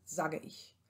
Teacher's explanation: das E klingt ganz, ganz leise nur an und beziehungsweise wird komplett gelöscht. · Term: E-Elision